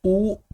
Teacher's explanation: उ लघु उ और दीर्घ ऊ ये ओष्ठय होते हैं